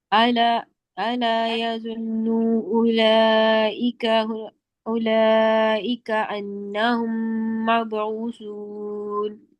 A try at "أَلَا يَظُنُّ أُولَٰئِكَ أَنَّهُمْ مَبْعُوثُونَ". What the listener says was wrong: अला यظुन्नु, नून पे गुन्ना दो हरकत का पूरा करें। नू लंबा नहीं करें, नू लंबा नहीं करें।